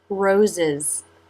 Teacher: Teeth together for the z sound. part for the schwa and together again for the z sound.